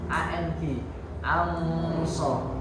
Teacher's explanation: Anso itu ikhfa, jadi dengung, samar. Jadi jangan anso, tapi disamarkan.